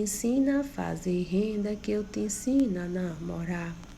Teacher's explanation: informal principalmente da variante linguística do nordestino viu gente em que habitualmente se suprime o r no final dos verbos no infinitivo